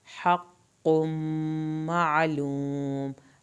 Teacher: हक़्क़ुम मालूम, हा को हल्क से पढ़ेंगे, कॉफ की शद और यहाँ पे मीम की शद पे अलिफ के बराबर देर लगाएंगे, आइन पे हल्क से आवाज़ निकालेंगे.